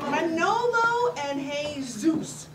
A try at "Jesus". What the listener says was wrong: You don't pronounce the J.